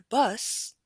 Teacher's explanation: bus is not going to have that lengthened vowel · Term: lengthening